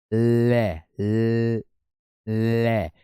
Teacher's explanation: उच्चारण के समय जीभ श्वास वायु के मार्ग में खड़ी होकर के और वायु उसके बगल से प्रवाह हो रही है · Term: पार्श्विक व्यंजन